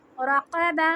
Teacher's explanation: भारी करके ज़बान को पीछे से ऊंचा करेंगे और हलक में से हम काफ को लेंगे जहाँ ज़बान का एंड होता है, ऊपर तालू से लगाएंगे तो काफ हैवी होगा